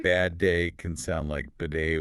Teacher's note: Bad day can sound like bidet, one longer D